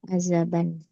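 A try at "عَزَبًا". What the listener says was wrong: Bukan bukan pakai zal ya. Ini pakai zai.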